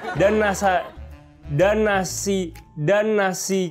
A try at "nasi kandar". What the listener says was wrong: Enggak pakai dan dong. N itu kan N.